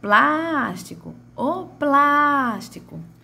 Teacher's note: a minha primeira sílaba da palavra plástico foi a que mais teve tonicidade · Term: sílaba tônica